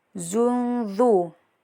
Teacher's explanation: Karena ada huruf salah satu dari 15 huruf ikhfa yaitu dza. Jadi ee tanwin bertemu dengan dza dibaca samar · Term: ikhfa hakiki